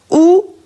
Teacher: У исто така е високо, но при изговорот го потребуваме задниот дел од устната шуплина. А заокружене бидејќи устните ги заокружуваме кога го изговараме у, исто како и о.